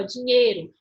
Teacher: Percebam que eu quase não pronuncio esse I. O som que sobressai é o E. É como se eu falasse assim, ó, dinheiro. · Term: semivogal